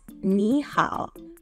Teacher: The first syllable, 你, has a falling rising tone, and 好 also has a falling rising tone.